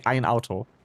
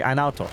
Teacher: There is a type of stop that's called a glottal stop. And most German accents, like most German dialects have it. But Swiss German doesn't.